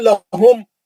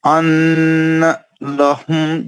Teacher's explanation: لہم، بس اس سے ہاں زیادہ نہیں. ان لہم پکڑ لینا، میم کو کھینچنا نہیں